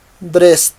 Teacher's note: Entonces, siguiendo la regla, dressed. En el sonido omitimos esta E y terminamos con un sonido de T.